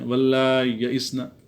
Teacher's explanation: واللہ یئسن طلاق میں ان کے ہاں واللہ کی بجائے واللہ ہے، حمزہ کا حذف ہے اور حمزہ کی جگہ یا ساکن پڑھتے ہیں